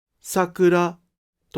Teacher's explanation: In Tokyo, it is pronounced "Sakura (LHH)," but in Kyoto and Osaka, it is pronounced "Sakura (HHH)." In this case, the degrees of the pitch of the first and second moras are both high.